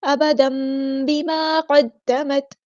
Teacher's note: تنوین کے بعد جب بھی با آتا ہے تو ہم تنوین کی آواز کو میم میں بدل دیتے ہیں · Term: اقلاب